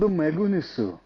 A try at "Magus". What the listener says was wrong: Magus? Why'd you add an N? That wasn't with a Japanese inflection. That was just in Japanese.